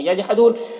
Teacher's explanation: جیم میں قلقلہ ہوگا، اور یہاں پر وقف کریں گے تو مد عارض وقفی ہوگا، تو اس طرح سے پڑھیں گے.